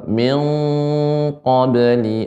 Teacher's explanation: untuk ikhfa pada qaf ini lebih dalam ya, pengucapannya